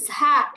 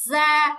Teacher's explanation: যা উচ্চারণের সময় আমাদের বাতাস বের হতে পারবে না